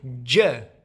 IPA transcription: d͡ʒ